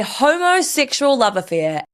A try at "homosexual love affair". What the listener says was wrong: You separate those words too far apart, loves. You're going to bang them together. Make it flow a little bit closer. You said a homosexual. It needs to be homosexual, okay? Because then it becomes, it's offensive. You've made it offensive. Make it flow quicker.